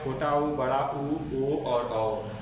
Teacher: वृत्तमुखी स्वर का मतलब होता है जिनके उच्चारण करने पर ओठ का आकार गोल हो जाए, उसे बोलते हैं हम लोग वृत्तमुखी स्वर।